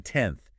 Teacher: 10th is influenced by the money sound that comes after it it makes the n Sound more Dental with the tongue touching the teeth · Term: coarticulation